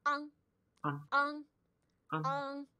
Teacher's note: just make sure you don't overpronounce the G at the end